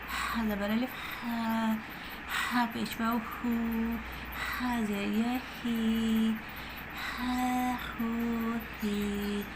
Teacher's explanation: اور جو وسط الحلق سے ہا ادا ہوتی ہے وہ ہے ہا